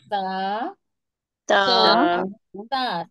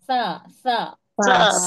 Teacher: تا ہوتا ہے جڑ سے اور سا ہوتا ہے کنارے